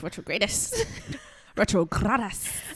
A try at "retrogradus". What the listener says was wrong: do it first one more time and roll the R.